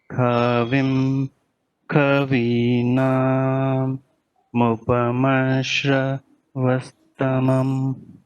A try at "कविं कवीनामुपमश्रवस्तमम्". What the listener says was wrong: Mupamashravastamam, all are coming in the same tone. Mu has to go up. Mupamasha. Mupamasha. Shra. Take shra up. Mupamasha. Mupamasha.